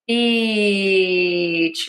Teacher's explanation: To say this, long, tense E